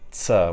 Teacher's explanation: Affricate consonants like [ts] which is a combination of t plus s